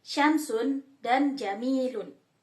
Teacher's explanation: Selanjutnya yang keenam yakni frontalatal, yaitu bunyi yang dihasilkan ketika bagian depan lidah mendekati daerah antara gusi dan langit-langit keras. Huruf yang termasuk pada kelompok ini yakni jim dan syin. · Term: frontopalatal